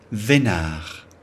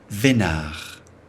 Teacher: The final D is not pronounced. Vénard. And that means lucky person.